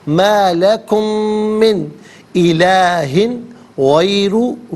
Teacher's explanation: غیرہ میں را پر پیش، را کو پر کر کے پڑھیں گے